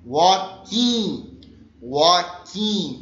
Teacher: O L não é pronunciado, portanto, fica walking.